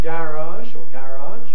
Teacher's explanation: with a strong vowel in the second syllable, unstressed